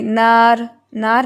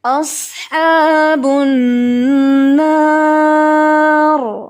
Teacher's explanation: نا جو ہے وہ باریک ہے، صرف را ہیوی ہے